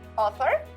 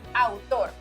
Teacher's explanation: In English, the AU sounds more like a, while in Spanish, it is like ow sound.